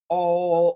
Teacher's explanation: sound all right it's all the way in the back of your tongue is all the way back in your mouth it's a nice deep sound oh and then sort of change your tongue as you come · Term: back vowel